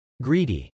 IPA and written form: grˈidi (greedy)